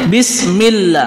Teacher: Kalau bismillah itu lafzul jalalahnya itu tarkik tipis karena diawali oleh kasr untuk membedakannya kita memperhatikan sebelum lafaz Allahnya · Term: tarqik